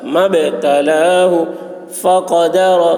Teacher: قاف کی آواز موٹی ہوگی اور رو پر ہوگی